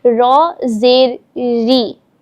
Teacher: ہم نے پہلے زبر کو پڑھا اور پیش کو پڑھا کہ زبر اور اگر پیش آ جائے تو رو کو پر یعنی موٹا کر کے پڑھیں گے. رو کے نیچے اگر زیر آ جائے اس صورت میں رو کو کس طرح پڑھیں گے, تو یاد رکھیں گے اس صورت میں ہم رو کو باریک کر کے پڑھیں گے